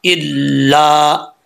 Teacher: حمزہ لام زیر ال، لام الف زبر لا، الا، لام کے آگے الف ہے تو ایک الف کی مقدار جو ہے اس کو لمبا کریں گے۔ الا، الف کو نہیں چھوڑنا۔